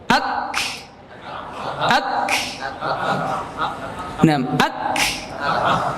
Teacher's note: Disyiddahkan maksudnya ditahan dulu suaranya, kemudian dikeluarkan udaranya. Ya, ditahan ya, ak, ditahan, kemudian dikeluarkan. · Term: huruf kaf